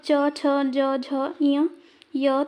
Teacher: इनको उच्चारण करते समय हमारे तालु का प्रयोग हो रहा है, इसलिए इन्हें तालव्य वर्ण कहते हैं।